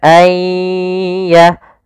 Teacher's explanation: Kemudian langkah kedua, karena di sini kita makan dengan idgham bi gunnah, maka kita tahan disertai dengan gunnah. Gunnah itu menahan, dengung.